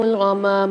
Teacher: میم کے ساتھ الف مد آ رہی ہے، اس کو بھی ایک الف مدار کھینچ کے پڑھیں گے